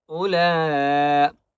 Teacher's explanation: لام کے اوپر بڑی مد ہے، اس لیے 5 الف کی مقدار کھینچ کر پڑھیں گے · بآیاتنا اولئک، حمزہ پیش او کو پڑھیں گے، اس واو کو نہیں پڑھیں گے اور حمزہ کو لمبا نہیں کریں گے، ٹھیک ہے۔ اولئک نہیں پڑھنا، ہم نے پڑھنا ہے اولا۔